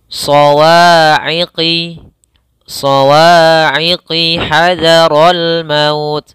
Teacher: Nah, sebelumnya ada alif lam syamsiyah sama alif lam, di sini alif lam syamsiyah. Langsung tidak dibaca tapi langsung ke huruf shad.